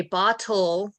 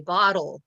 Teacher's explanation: I say bottle and it sounds like a d